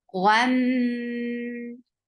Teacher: Attach with meme, we will get sifa of gunna, and this is akmal gunna.